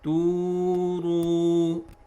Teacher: they have to stretch both mud letters waw equally 2 counts